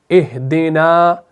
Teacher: हम इस हमजा को कुव्वत के साथ अदा करते हैं, और हा को फिर हम पस्ती के साथ अदा करते हैं, क्योंकि उस हमजा के साथ हम इसको मिलाकर पढ़ते हैं, तो ये बन जाता है इहदिना।